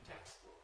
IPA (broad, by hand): ˈtekstbʊk